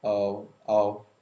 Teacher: he didn't continue to pass air and he didn't make a sound with his vocal chords